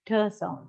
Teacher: We don't get any vibration when we pronounce this t, t sound. Okay, so voiceless t sound is pronounced after voiceless consonants.